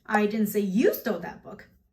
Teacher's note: You see the emphasis on you instead of I.